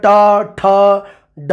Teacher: जीभ नूं उल्टा करके बोलियां जांदियां, उल्ट जीबी कहा जाता है इन्हों